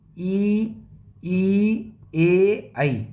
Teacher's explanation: अग्र का मतलब आगे वाले भाग से बोले जाते हैं।